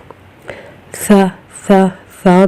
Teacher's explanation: زبان اوپر والے دانتوں اور نیچے والے دانتوں کے درمیان میں آ جاتی ہے